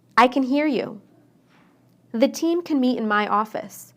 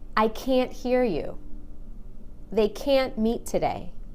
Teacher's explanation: when I say can inside the sentence I shortened the a · But when I say can't, I stress that A and make it really long. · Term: the long A